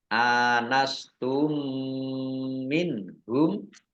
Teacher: misli ya dibaca mendengung mim yaitu ditandai dengan mimnya ada tasdidnya mim tasdid dibaca mendengung ditahan dua harakat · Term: idgham mimi